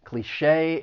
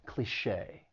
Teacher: Well, this is a word that English has borrowed from French, and that's why, again, the spelling and the pronunciation don't really match. Cliché, it has 2 syllables. The stress is on that second syllable, and that CHE with the accent mark sounds like shay, cliché. The next word is paradigm.